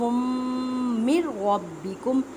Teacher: نون ساکن کے بعد را حروف یرملون ادغام بلا غنہ کریں. مینس کی غنہ نہیں کریں اور را کو پر پڑھیں کیونکہ را کے اوپر زبر ہے